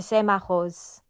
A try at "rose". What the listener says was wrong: At the very end, rose. I'm hearing you're unvoicing that final fricative. Rose. Rose.